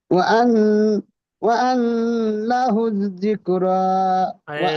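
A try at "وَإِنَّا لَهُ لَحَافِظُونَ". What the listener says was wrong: নুনে খাড়া যাব টান ছেড়ে দিচ্ছেন কেন? প্রত্যেকটা অক্ষর আপনি বুঝে সুঝে পড়বেন তো, আন্দাজে পড়ছেন।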